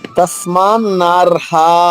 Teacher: అక్షరాన్ని విడదీశరు ఇక్కడ తస్మాన్ నార్హ ఇక్కడ కూడా అంతే ర నార్ హ ర పొల్లుగా హ దీర్ఘంగా